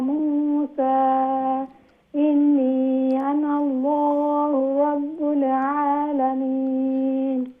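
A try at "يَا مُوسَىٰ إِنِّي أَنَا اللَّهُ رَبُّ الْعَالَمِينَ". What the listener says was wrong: এরপরে মাদ্দে মুনফাসিল তো দুইটা করবাটা আরেকটু করবা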